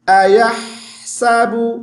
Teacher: ہا کی آواز تھوڑی دیر منہ کے اندر چلتی رہے